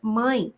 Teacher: primeiro vai aparecer a vogal para só então aparecer a semivogal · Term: ditongo decrescente